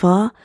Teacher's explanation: تو اب اس کو پڑھتے ہیں غی، آگے ہے فا، فا جو ہے بڑی نرمی سے ادا ہوگا اور یہ ہونٹوں سے نکلنے والا حرف ہے۔ فا کا مخرج ہے کہ اوپر والے دانتوں کے کنارے اور نیچے والے ہونٹ کے تری والے حصے سے